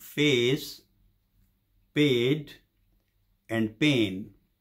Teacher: words having the diphthong a in between the uh sound so the starting point is same as the e of the word men